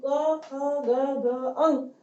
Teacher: क्यों? क्योंकि ये पांचों अक्षर जब हम बोलते हैं तब हमारी जीभ जो है वो हमारे कंठ से स्पर्श करती है, इसलिए इसको कंठीय कहा गया है।